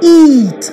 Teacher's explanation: the lips are spread and remain unrounded the vial is pronounced for a longer length of time if · During the articulation of this vowel, the front part of the tongue is raised towards the hard palate to a position just below the close position. The lips are spread and remain unrounded. The vowel is pronounced for a longer length of time. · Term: first front vowel, front vowel